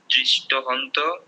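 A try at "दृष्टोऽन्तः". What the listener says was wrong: দৃষ্ট অন্ত, অন্ত হন্ত না, অন্ত,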